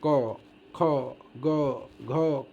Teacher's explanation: एक बार क के देखना, क, ख, ग, घ, कहीं से मतलब कि टच नहीं होगा, न जीभ ऊपर जाता है, न दांत से संपर्क होता है, न तुम्हारे कहीं ओठ से है, डायरेक्ट ये मुंह से खुलता है। क, ख, मुंह खुलता है और सीधे कंठ से आवाज़ आती है और बाहर हवा साथ में निकलती चली जाती है, उच्चारण होते जाता है।